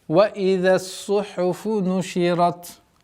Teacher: Обратите внимание на твердость ра и фрикативность та